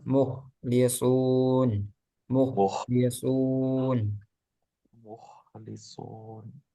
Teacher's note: Terus muk itu tebal.